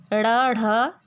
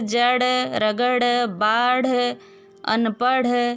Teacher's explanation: ड ढ ये उत्क्षिप्त ध्वनि है, ऐसा ही उच्चारण किया जाता है। दूसरी बात है, शब्द के अंत में जैसे जड़, रगड़, बाढ़, अनपढ़, ये भी बिंदु दिया गया है।